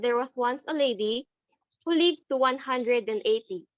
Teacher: the rhythm of a limerick is anapestic which means two unstressed syllables are followed by a third stressed syllable